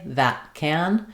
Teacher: use an unreleased T and then the consonant sound of the K, that can. And in this case, I'll also pay attention to how I say my can.